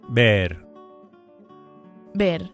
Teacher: the v is pronounced as a very light b